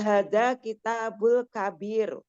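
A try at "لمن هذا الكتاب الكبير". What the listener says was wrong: Jadi di sini lamnya juga dibaca liman hadzal kitabul kabiru. Hanya di sini panjang ya.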